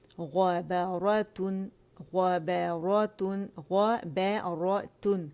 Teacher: غ موٹا با باریک را موٹا تا باریک